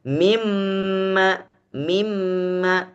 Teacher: dengan mim kalau ketemu dengan mim bagaimana kita membacanya mimma mimma Adakah Nun terdengar tidak enggak terdengar lagi justru mim yang terdengar